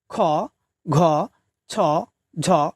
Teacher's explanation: খ, ঘ, ছ, ঝ এসব মহাপ্রাণ ধ্বনি উচ্চারণকালে শেষে হ মহাপ্রাণ ধ্বনিটি উচ্চারিত হচ্ছে। প্রতিটি বর্গের দ্বিতীয় এবং চতুর্থ বর্ণ বা ধ্বনিটিকে বলা হয়ে থাকে মহাপ্রাণ ধ্বনি।